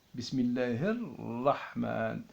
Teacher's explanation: Un deuxième tiré parce que le R, le premier R, il est à la place de L